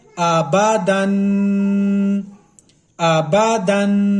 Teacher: تنوین کے اوپر ہم نے غنہ کیا، یہ دال کے اوپر 2 زبریں تنوین ہے، تنوین پہ غنہ کریں گے تو تینوں ساؤنڈز کو جب ملائیں گے آبادن، آبادن۔